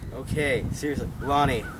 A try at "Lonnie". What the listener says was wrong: Close. Close. Close. Close. That's almost angry. That's annoyed, not angry.